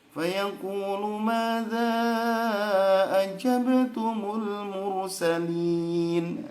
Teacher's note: Kemudian ayat 65 ibu bacanya mursalun, ujungnya itu harusnya mursalin ya.